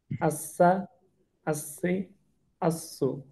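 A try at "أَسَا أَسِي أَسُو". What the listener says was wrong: আচ্ছা, আহ, এই আওয়াজ চালু রাখার সময়টাকে আরেকটু লম্বা করবেন। আসা, আসি, আসু, আস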